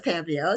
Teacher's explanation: So, the accent is on the first syllable.